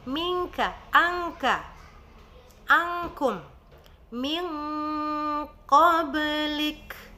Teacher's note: di dua huruf ikhfa di situ boleh kita memberikan suara ng, yaitu huruf kaf dan qaf.